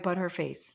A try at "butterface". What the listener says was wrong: No. Skip the H. Butterface. you really want to get slangy, butterface.